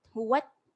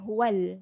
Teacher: Innahu kemudian huwat ta baris mati bunyikan huwat bukan huwal